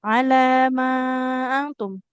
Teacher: Antara lam dengan mim sama-sama panjang, tapi kita lihat juga durasinya. Untuk lam cukup 2 harokat, sedangkan mim dia 4 sampai 5 harokat.